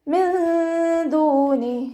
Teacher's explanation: നൂൻ സാക്കിനയെ മറച്ചു വെച്ചിട്ട് മണിച്ചോതി കൊടുക്കുക. നൂനിൻ്റെ സൗണ്ടിനെ വ്യക്തമായിട്ട് കേൾപ്പിക്കരുത്, മണിക്കുക. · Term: ഇഖ്ഫാ